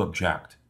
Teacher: When the stress or the accent is placed on the second syllable, the word object means to indicate dissatisfaction with a situation.